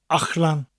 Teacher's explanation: the double L sound sounds a little bit different in the middle of a word. It's a CH sound with a slight L.